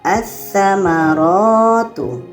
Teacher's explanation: Lamnya tidak kita baca, karena sa ini adalah huruf alif lam syamsiyah.